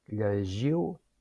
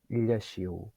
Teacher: això és una palatal sonora, fricativa, lleixiu, sorda